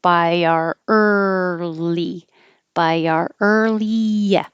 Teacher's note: when i say r my tongue curls back for the r position and because early starts with the tongue in the r position